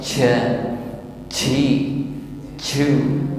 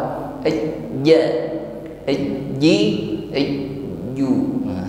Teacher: Ya, jadi atribut yang dimiliki huruf jim adalah jah, yang merupakan penghambatan aliran napas. Saat mengucapkan ini, napas ditahan, ya, karena kekuatan titik artikulasi, karena tekanan pada makhraj sangat kuat, ja, ji, ju, sehingga tidak ada napas yang keluar.